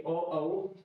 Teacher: ओ औ कंठ और ओष्ठ से उच्चारित होते हैं।